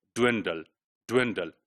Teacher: So this d sound is influenced by the lip rounding of wo.